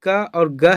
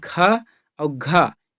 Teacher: जितने भी क और ग है ये सभी अल्पप्राण है, लेकिन ख और घ ये जो है महाप्राण है